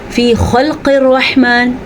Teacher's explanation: خا کے مخرج کو پر، قاف کو پر، رحمان میں را کو پر اور حا کو اپنے مخرج سے نکالنا ہے۔